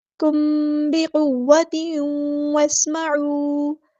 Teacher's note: क़ाफ़ हमारा heavy letter है पूरा अदा करेंगे।